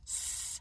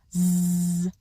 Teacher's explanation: The only thing that's different about those sounds is the voicing. S, no vocal cord vibration. Z, vocal cord vibration.